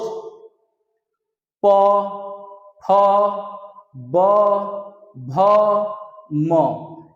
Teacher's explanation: प का उच्चारण जब हम कर रहे हैं तो दोनों ओठ एकदम सट जा रहे हैं, उसके बाद हवा बाहर निकल जा रही है, इस प्रकार इसे कहेंगे ओष्ठ।